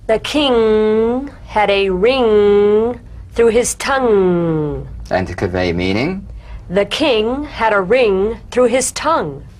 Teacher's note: sustain the ng in these sentences play it for full musical value